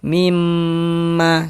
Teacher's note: Jadi di bagian mimnya itu suaranya itu kita tahan, kita panjangkan sejenak, kira-kira sepanjang 2 harokat. Mimma, mim, nah kita tahan. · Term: didengungkan